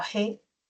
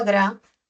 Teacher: en la sílaba G, suena como fricativo, mientras que en la sílaba gra, suena como oclusivo